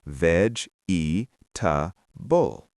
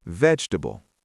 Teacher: The second e disappears